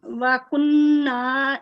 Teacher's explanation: یہ کن اس میں 2 سیکنڈ لمبا نہیں کہیں گے, اس میں 2 سیکنڈ غنہ صرف آپ نے کرنا ہے, اس کو لمبا نہیں کرنا